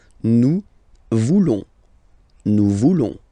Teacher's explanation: Then for nous, classic ending, ONS, don't pronounce the S, just pronounce the on